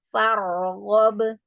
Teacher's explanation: Iya, roknya angkat tafkhim ya, rok sukun sebelumnya fathah.